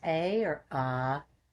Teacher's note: the first syllable a pronounced as a long ah the sound starts in the back of your throat and you stretch it out you will start feeling your solar flexes and chest vibrating and